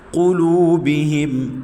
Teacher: قاف حروف مستعلیہ میں سے ہے، موٹا کر کے پڑھیں گے